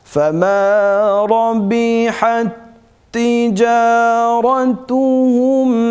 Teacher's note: Buradaki mesela sakin ta gelmiş. Ondan sonra aynı cinsten yine harekeli ta geldiği için birbirine devam edeceğiz. İdgamsız bir şekilde okuyacağız. · Birbirine katacağız ve gunnesiz okuyacağız